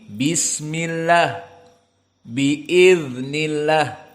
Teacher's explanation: namun jika kasrh maka di sini lamnya muraqoqoh